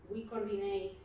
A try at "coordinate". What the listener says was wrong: Ahí hay dos O's, yeah, and you should pronounce them. Coordinate, because one is O and one is O. Coordinate.